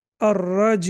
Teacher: Ya will be prolonged for 2 to 4 seconds when stopped.